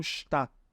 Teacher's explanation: Esse DT aqui no final a gente fala como se fosse um T apenas. A gente não fala DT, tá?